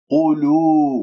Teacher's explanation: القاف مضمومة إذن مفخمة مرتبة ثالثة